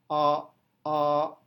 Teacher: saat mengucapkan ee ee Anda bisa merasakan lidah itu berada dalam posisi hampir berada dalam posisi beristirahat di dasar mulut